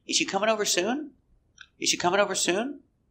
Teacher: the intonation goes up at the end because it's a yes or no question